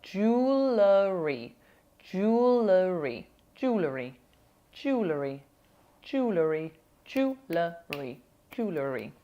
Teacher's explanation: It's not so easy because you've got a dark L.